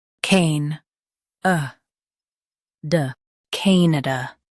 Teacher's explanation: Stress cane and keep uh-duh soft.